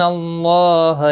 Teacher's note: اللہ کا لام زبر کی وجہ سے پر پڑھا جائے گا. اس کے اوپر کھڑی زبر بھی ہے 1 الف کے برابر کھینچ کر پڑھیں گے.